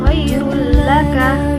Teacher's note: tanwin bertemu dengan lam tanpa mendengung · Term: Ikrom Bilaguna